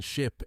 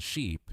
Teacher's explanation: It's the position of your lips and the tension of your tongue. Ship has a shorter, more relaxed vowel, with lips spread slightly. Sheep has a longer, tenser vowel, with lips pulled a little wider. It's a small adjustment, but it changes meaning completely.